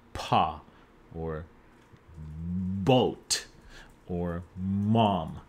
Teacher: when a sound is made with both of your lips, we call it bilabial